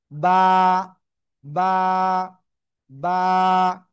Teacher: এই অক্ষরটা কোন জায়গা থেকে উচ্চারিত হয়? দুই ঠোঁটের ভিজা অংশ থেকে।